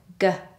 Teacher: you are using the back of your tongue. It goes up and makes contact with the roof of your mouth in the back, so against the velum or the soft palate. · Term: velar consonants